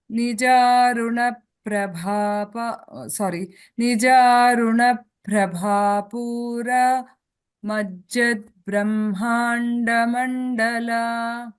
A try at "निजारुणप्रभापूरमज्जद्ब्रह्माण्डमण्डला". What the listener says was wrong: So don't take a pause after Prabhapura.